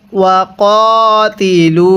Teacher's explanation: এখানে কফ খারা জবর ক, এক আলিফ টেনে পড়তে হবে